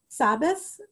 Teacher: the shin, the sh sound gets pronounced as a s, as an s, so that they say sabbas for Shabbos